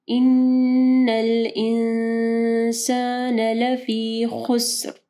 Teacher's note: ان الانسان لفی خسر، اب یہاں پہ بھی دیکھیں خا کو ہیوی پڑھنا ہے، سین جو ہے وہ ساکن ہے، اس کے بعد را کے اوپر ہم لوگ وقف کریں گے تو را بھی ساکن ہو جائے گی، تو را کو واضح پڑھنا ہے اور را ہیوی پڑھی جائے گی کیونکہ خا کے اوپر پیش ہے · والعصر ان الانسان لفی خسر، ان حمزہ زیر ای، نون کے اوپر جو ہے شد آ رہی ہے، ٹھیک ہے، تو نون جو کے اوپر ہم لوگ غنہ کریں گے، اور یہاں پہ دیکھیں نون ساکن کے بعد سین ہے، ٹھیک ہے، تو یہاں پہ اخفا غنہ ہوگا